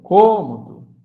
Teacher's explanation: som fechado, a terceira sílaba contando de trás para frente, eu sei que é um vocábulo proparoxítona, certo?